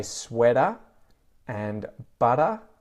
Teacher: So it almost sounds like a D sound there. That's the T flap.